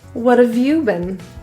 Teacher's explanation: notice how have gets reduced to just the V sound